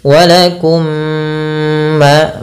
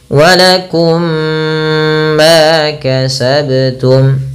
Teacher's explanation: Maka di sini ada mim mati bertemu dengan mim, maka cara membacanya masukkan mim yang pertama kepada mim yang kedua dan ditahan. Walakum ma, baru dilepas. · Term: idgham mimi